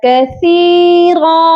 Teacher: دو زبر ہے، اور جب بھی آپ دیکھیں کہ آخری حرف پر دو زبر آ رہی ہے تو آپ نے آخری لفظ پر جب وقف کرنا ہے تو آپ نے ایک الف کی مقدار لمبا کر کے وہاں پر وقف کرنا ہے، تو یہ پڑھا جائے گا کثیرا۔